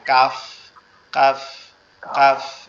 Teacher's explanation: আর কাফটা মূলত, কাফের উচ্চারণের স্থান হচ্ছে জিহ্বার গোড়া থেকে একটু আগে বাড়ায়া, মানে জিহ্বার মধ্যখান মতো এরিয়ার থেকে উপরের তালুর সঙ্গে লাগবে